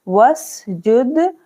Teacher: और वाव सिन जबर वस, जीम दाल पेश जुद, वस जुद, दाल पर क्या होगा, कलकला, जीम दाल पेश जुद, वसजुद, अलिफ नहीं पढ़ना है, वाव को सीन के साथ मिलाना है